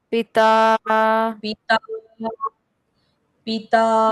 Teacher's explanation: पिता में हमको ता का साउंड लॉन्ग लेना है और पी का साउंड हमको शॉर्ट रखना है